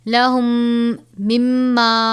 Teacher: میم ساکن کے بعد دوسری میم ہے تو یہاں پر غنہ کریں گے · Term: ادغام شفوی